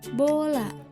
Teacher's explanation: Vokal O dalam kata bola, bibir sedikit membulat, lidah di posisi tengah bagian belakang.